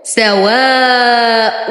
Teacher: حرف مد وبعده همز في كلمة واحدة، فالمد واجب متصل يمد لدى ورش بالإشباع 6 حركات